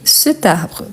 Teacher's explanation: Donc je prononce le T en faisant la liaison.